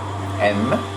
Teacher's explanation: Mais aussi des consonnes nasales, et celles-ci sont prononcées en abaissant la louette afin de laisser passer l'air par la nez. Le son M est prononcé avec la position bilabiale et les lèvres ensemble